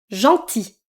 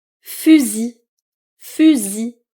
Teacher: Le L est silencieux. À la fin.